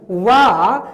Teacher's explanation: वा जिसका उच्चारण स्थान दंतोष्ठ होता है, यह थोड़ी मात्रा में स्पर्श करता है दंतोष्ठ को, इसीलिए वा को ईसत स्पृष्ट कहते हैं।